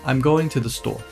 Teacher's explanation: Falling intonation at the end of the sentence for a statement.